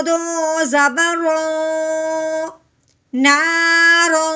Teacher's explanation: پہلے تو اب ہم نے اس رو کو موٹا کرنا ہے دو زبر کی وجہ سے ، زبر والی ہونے کی وجہ سے، اس کے بعد تنوین